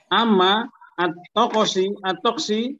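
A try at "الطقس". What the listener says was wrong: Bukan taksi, toksu. Amma jadi bahasa taksi. Ya, Pak Ponco jangan dibulak-balik. Toksu jadi taksi nanti gimana?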